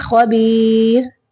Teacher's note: را کو باریک پڑھیں گے وقف کرتے ہوئے